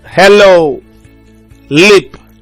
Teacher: It's a voiced alveolar lateral consonant sound.